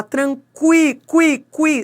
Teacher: Esse U é pronunciado, ele é uma semivogal